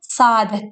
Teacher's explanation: birinci sait tələffüz olunmur. İkinci sait isə uzun tələffüz olunur.